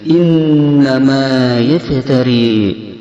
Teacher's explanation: Cara membunyikannya yaitu dengan mendengungkannya 2 harakat pada hidung. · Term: gunnah